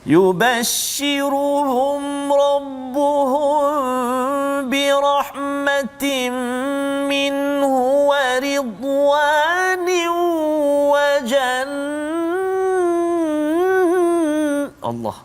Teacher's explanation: nun yang bersabdu, mim yang bersabdu, gunnah dia, dengung dia kena baca 2 harakat saja